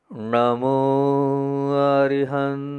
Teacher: जीभ को पीछे दो बार ले जाना है ण जो है ना पीछे जाता है पीछे मतलब जीभ को पीछे ले जाना और आपको एक बात